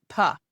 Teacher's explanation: So your lips go together to make the sound, but your voice isn't in it. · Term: lip popper